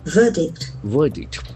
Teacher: the middle R is silent.